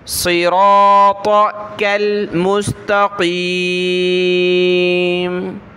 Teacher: صاد را طا ان سب کو موٹا پڑھنا ہے، لیکن کاف باریک ہے، پتلی کاف ہے، چھوٹی کاف، اس کو پتلا پڑھیں گے، صراطک المستقیم۔